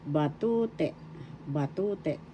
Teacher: The second syllable is where the accent is how you pronounce it.